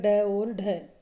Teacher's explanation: उच्चारण करते समय जो जिव्या का अग्र भाग है यानी कि जिव्या की जो नोक है मुर्धा को स्पर्श करके एक झटके के साथ नीचे गिरती है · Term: उत्क्षिप्त व्यंजन